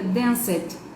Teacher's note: Quando ele recebe o ED, então, ele pode ter um som de E e T no final, ou ele pode ter um som de E e D no final, ou ele pode ter um som de D somente. E no caso do danced, ele tem um sonzinho meio T no final, então ele fica danced, entende?